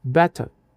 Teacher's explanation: Se o R está no final de uma palavra, ele fica mudo